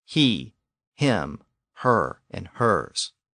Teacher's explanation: all of these forms retain their original H sound at the beginning